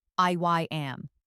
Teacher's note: In I am, a small I sound is inserted